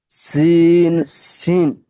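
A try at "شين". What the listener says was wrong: সিন আর শিন, একটা হচ্ছে সিন সিটি দেওয়া, আর আরেকটা হচ্ছে কি প্রেসার কুকারের মতো আওয়াজ হবে, রেডিও রেডিও রেডিওর মতো আওয়াজ হবে। সিন আর শিন। না, দুটো আপনার সিন সিন হয়ে যাচ্ছে না। আচ্ছা, শিনটা বলার চেষ্টা করুন, প্রথমে বলুন সা, সবাই বলুন সা।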